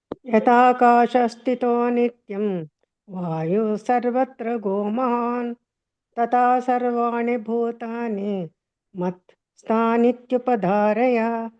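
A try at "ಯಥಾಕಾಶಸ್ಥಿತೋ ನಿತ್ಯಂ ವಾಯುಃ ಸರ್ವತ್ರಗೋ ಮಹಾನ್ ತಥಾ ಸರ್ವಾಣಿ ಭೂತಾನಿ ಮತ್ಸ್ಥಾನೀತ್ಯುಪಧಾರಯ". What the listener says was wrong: ಸರಿ ಮಹಾಪ್ರಾಣಗಳನ್ನ ಗಮನಿಸಿ ಉಳಿದಿದೆಲ್ಲ ಚೆನ್ನಾಗಿ ಬಂತು ಮಾತಾಜಿ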